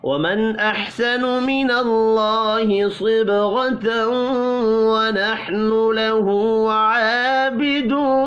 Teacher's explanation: نون ساکن کے بعد حمزہ ہے, اظہار حلقی ہوگا, غنہ نہیں ہوگا.